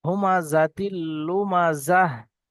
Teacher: তো তাই এখানে সাকিন হয়ে যাবে। আর গোল তা যেখানে আসবে সেখানে যদি বা দাঁড়ানো হয় তাহলে দাঁড়ানোর সময় হা হয়ে যায়।